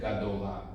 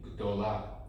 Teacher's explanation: you don't say Gadola, you say Gdola, because this vowel just disappeared.